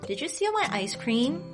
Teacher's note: hear how my voice goes up on that last word cream that's what the second tone is the rising tone i decided